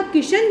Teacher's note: तो जैसे कभी कभी ये मुख सुख के कारण आगम हो जाता है ध्वनियों में, यानी कोई शब्द है उसमें, जैसे कृष्ण है, कृष्ण का किशन जो बना है उसमें स्वर का आगम हुआ है, मध्य स्वर का